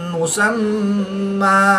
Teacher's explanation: میم مشدد میں ہمیشہ غنہ ہوتا ہے تو یہاں پر ہم غنہ آنی کریں گے۔ وقف کی حالت میں دو زبر کی تنوین کو الف مدہ سے تبدیل کر کے پڑھیں گے